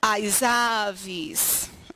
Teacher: se eu termino com um S, que vai puxar para a vogal posterior, eu junto esse S com a vogal posterior